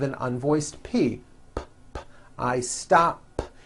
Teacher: I stop ends with an unvoiced P.